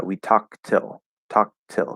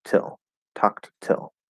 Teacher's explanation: we might choose not to stop the t and actually kind of just like push out a little bit of a t like till tucked till and that's something that you'll see very